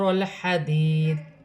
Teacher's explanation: وف کی صورت میں زیر گر جائے گی اور دال ساکن ہو جائے گی